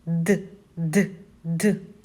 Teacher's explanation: його спробуємо вимовити сядьте перед дзеркалом і спробуємо д д д наш кінчик язика та передньої його частинка впирається у верхні зуби бокові краї язика стискаються з верхніми кутніми зубами чим створюють перешкоду для повітря м'яке піднебіння закриває прохід носову порожнину голосові зв'язки вібрують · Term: звук д